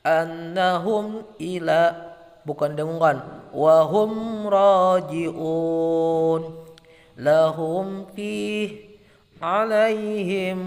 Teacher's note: bunyi mim sukun dibaca jelas dengan bibir tertutup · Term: izhar syafawi